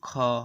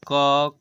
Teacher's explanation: दूसरा वाला आएगा महाप्राण, पहला वाला अल्प प्राण। ध्यान दीजिएगा, ये है अल्प प्राण, ये है महाप्राण, ये है अल्प प्राण और ये है महाप्राण।